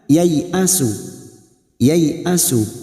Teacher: huruf ya fathah diikuti alif juga tidak berfungsi sebagai mat atau panjang, harus dibaca pendek, bunyinya yai'asu.